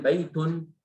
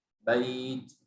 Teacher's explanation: kita kalau waqaf hilang nunnya